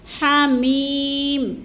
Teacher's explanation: मीम के आगे गुन्ना नहीं करना, इसको जल्दी जल्दी आगे अदा करना है